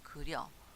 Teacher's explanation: 이와 어가 합쳐져서 여라는 이중모음으로 발음된 거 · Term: 모음 축약